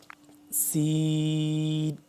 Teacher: سین کو بھی ہم نے لمبا بھی کرنا ہے اور اس کو سیٹی کی آواز آئے صحیح کر کے سخت کر کے پڑھنا ہے۔